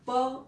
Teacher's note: आपको याद रखना है कि प वर्ग का उच्चारण ओष्ठ मतलब होठों के द्वारा होता है। जैसे कि आप प उच्चारण कर रहे हैं तो होठ बंद होते हैं, लिप्स का यूज हो रहा है